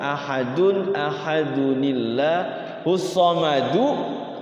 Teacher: kalau disambung dia wasal huruf qalqalahnya hilang karena dibacanya kan wasal. Jadi huruf qalqalah yang tidak diwaqafkan yang hidup tuh itu tidak jadi qalqalah.